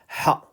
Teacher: Ha is coming from the middle of the throat.